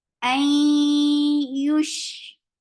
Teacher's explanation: This is idgham with gunna to keep the sound in your nose for a longer time. Ay yush for dhamma circle lips.